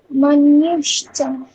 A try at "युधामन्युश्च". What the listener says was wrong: হ্যাঁ, মানুষচ বলছেন আপনি, মন্যুশ্চ। ওখানে আপনি জাস্ট একটুখানি চেঞ্জ করে এটা ভেবে নিন, তাহলে এটা হয়ে গেল। নি উ, নি উ, এটা ভেবে নিন, তাহলে হয়ে গেল। युधामन्युश्च, युधामन्युश्च, বলুন।